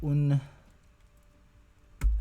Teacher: So it's, the N is syllabic.